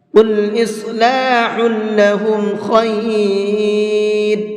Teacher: قل کے قاف کو منہ بھر کے پڑھیں گے